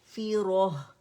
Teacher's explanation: कसरा जो है उसके लिए आवाज एक काउंट के नीचे जाती है · फे की आवाज नहीं आनी चाहिए, फा कसरा फी की आवाज आनी चाहिए